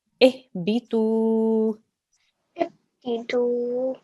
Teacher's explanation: The letter before has a dhamma, so this is a waw mud. Okay, waw mud. So we have to elongate this sound for 2 seconds.